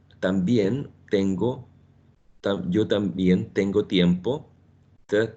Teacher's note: when you produce t in Spanish is behind the upper teeth or almost in between the teeth, okay? But not inserting the tip of the tongue in between the upper and lower teeth in Spanish, but just behind them, okay?